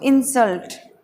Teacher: इंसल्ट। सल्ट बोलते समय थोड़ा सा जोर देना है, तो इंसल्ट।